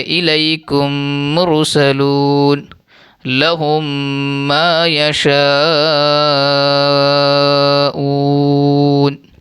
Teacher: میم کو میم سے ملا کر غنہ کے ساتھ پڑھیں گے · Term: ادغام شفوی